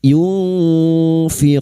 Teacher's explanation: Wala nun sukun bertemu fa ikhfa hakiki. Kita samarkan bunyi nun sukun dan mendengung selama 3 harakat. · Bertemunya mat dengan huruf hidup yang dibaca waqaf mat arid li sukun 4 harakat kita panjangkan.